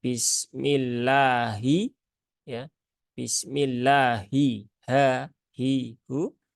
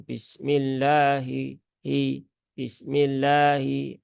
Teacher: kesalahan yang juga sering terjadi pada lafaz bismillah itu adalah khofa pada huruf ha yaitu pada lafaz Allah